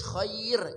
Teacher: Walaupun rnya berharakat dommah atau domatain tetap dibaca tipis. Kenapa? Karena didahului oleh ya khair ya.